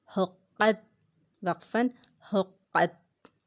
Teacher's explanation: قاف کو موٹا پڑھنا ہے اور تا کو باریک پڑھنا ہے